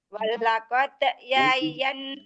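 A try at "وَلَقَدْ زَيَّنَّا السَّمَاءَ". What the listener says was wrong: Bukan yayan, zayyan. Walaqad zayyana sama.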